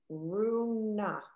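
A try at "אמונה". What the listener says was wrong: Almost, but not quite. So the M sound has its own vowel. There's no R sound here anywhere.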